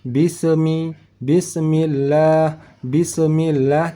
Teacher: yang bukan yang tidak termasuk salah satu dari huruf Qalqalah artinya saat kita membaca huruf Sin yang mati ataupun huruf Sin yang sukun tidak perlu ada pantulan bunyi huruf matinya